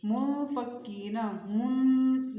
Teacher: ناک میں آواز جائے گی، نرمی سے اخفا کریں گے